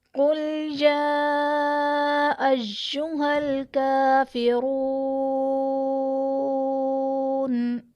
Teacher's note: اب قل میں قاف حروف مستعلیہ میں سے ہے، اسے ہم پر پڑھیں گے. یا ایہل میں یا پر کھڑا زبر ہے جو کہ الف مدہ کے قائم مقام ہے، اس لیے اسے ایک الف یعنی 2 حرکات کے برابر کھینچ کر پڑھیں گے.